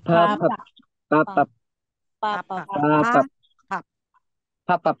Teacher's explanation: letter P na aspirated. So, pag nasa initial at sa middle, aspirated din. Sa final lang po hindi.